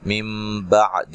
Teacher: نون ساکن کا اقلاب مع الغنہ ہے، دال کو لمبا نہیں کرنا، عین کو واضح نکالنا ہے۔